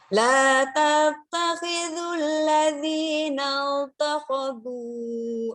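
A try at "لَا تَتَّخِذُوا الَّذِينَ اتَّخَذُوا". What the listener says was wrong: Ini pas masuk ke na ke ta kenapa jadi now? Nah, ini nggak boleh. Nat. Ya nggak boleh. Jadi huruf ta itu waktu tasdid ya ta aja tipis, nggak boleh naik-naik. Tadi bukan tekan tapi kayak mau naikin pangkal lidah terus gitu. Nggak boleh, nggak boleh. Harus tipis terus.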